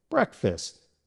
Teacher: In breakfast, the first part, brek, is stressed or emphasized. The second part, fast, is unstressed, so the vowel sound changes to a short I sound, as in fist. Saying breakfast is smoother and faster than saying breakfast.